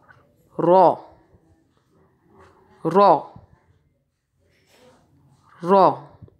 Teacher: زبان کی نوک کا نچلا حصہ اوپر کے تالو کے ابتدائی حصے سے لگا کر رو کی آواز ادا کی جاتی ہے